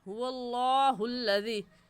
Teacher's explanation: لفظ اللہ سے پہلے زبر آ گیا تو لفظ اللہ موٹا ہوگا، اور موٹا کرنے کا طریقہ کہ آپ کے دونوں ہونٹ گول ہو جائے